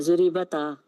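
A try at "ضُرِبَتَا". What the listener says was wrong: इसको आपने हरकत देनी है, साकिन नहीं करना।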